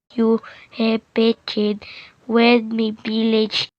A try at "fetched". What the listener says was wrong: The learner also mispronounced fetched as pecked, me as wed, and the as the.